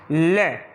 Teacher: ले तो ऐसे उठ जाती है। जब हमारे स्वरतंत्र से हवा बाहर निकल रही होती है और ले बोलते हैं तो जीवा जो है हवा को बाहर आने से रोक लेती है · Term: पार्श्विक